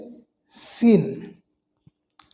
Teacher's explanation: সিনটা হবে জিহ্বার আগার সামনের নিচে দুই দাঁতের পেট ও আগার সঙ্গে লাগিয়ে বাতাসের শব্দ হবে সেই শব্দটা হবে চিকন এইরকম সিটির মত হালকা বাতাসের শব্দ বের হয়ে আসবে শক্তভাবে সেটি